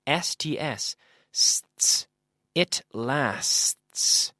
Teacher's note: And we make this sound by having our teeth together and blowing out like the standard S sound. My tongue is not touching my teeth. It's like almost like air escaping from a tire.